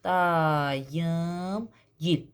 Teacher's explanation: Dayım gil deyirsənsə vurğu yama düşəcək. Gil vurğu qəbul etmir.